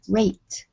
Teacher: So this is a voiceless sound. Okay, the T sound is voiceless.